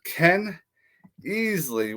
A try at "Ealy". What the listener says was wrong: It's pronounced Ealy. It's Ealy. A lot of people pronounce it Eli, but it's pronounced Ealy.